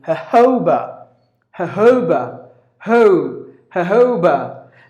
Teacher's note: you gotta give the stress on the second syllable · the pronunciation sounds like the J is replaced with the H sound. Just imagine, take the J's off, 2 J's, and then put 2 H's first and the second.